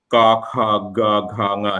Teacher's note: this is caught in the throat, aspirated, voiced aspirated through the nose